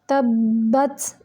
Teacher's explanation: बा जो है ये भी मुशद्दद है। इस पे इतनी देर रुकेंगे कि दो हरूफ की अदायगी हो जाए, यानी दो बा इसके अंदर हैं तो दो की अदायगी करनी है।